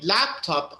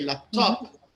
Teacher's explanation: when I say laptop, I'm putting stress on lap, but if you say laptop, I'm putting stress on top.